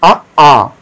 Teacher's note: जैसे ही आपने आ बोला, दीर्घ आ बोला, आपका पूरा मुख विवर खुल जाएगा जो है, इसीलिए विवृत्त स्वर में एक ही स्वर आएगा आपका, कौन सा, दीर्घ आ, लघु आ नहीं आएगा इसमें, दीर्घ आ आएगा।